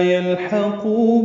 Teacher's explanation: لما میم مشدد پہ غنہ ہے اور ما الف مدہ ہے 2 حرکات لمبا کریں گے. یلحقو لام ساکن پہ اظہار، ہا وسط حلق سے ادا کریں گے